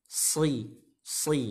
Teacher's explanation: sin dan za dan shad ini sama memiliki sifat sofir. Apa sofir itu? Seperti suitan burung.